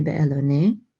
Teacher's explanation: the ne part right here at the end gets the main accent. but this meteg right here, this vertical line is like a secondary accent mark.